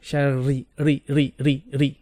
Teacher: when you have a kasra for a ra, then it will be flat. So ra kasra is ri.